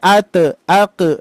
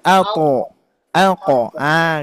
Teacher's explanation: huruf th itu nanti bunyinya itu tebal sebagaimana sifatnya th th maka ketika di disukunkan a alqo Ah gitu Pak